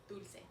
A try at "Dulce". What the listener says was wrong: You added an R.